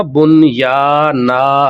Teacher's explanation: جب ہم دو تنوین کے اوپر وقف کرتے ہیں، رکتے ہیں، ٹھیک ہے جی، سانس لیتے ہیں، تو ہم اسے بنیانا کر دیتے ہیں، ایک الف کے برابر یعنی کر دیتے ہیں، ایک حرکت اس کی رہ جاتی ہے جب ہم اس کے اوپر وقف کرتے ہیں۔